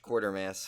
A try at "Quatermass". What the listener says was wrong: But it's Quatermass. It's not Quartermass.